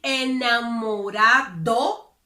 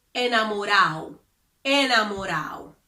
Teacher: When the letter D appears between two vowels, Dominicans generally do not pronounce it. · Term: omitting the letter D